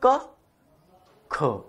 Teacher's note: बोल के देखियो, हमने बोला क ख, तो का की अपेक्षा खा में श्वास वायु को ज्यादा निकल रही है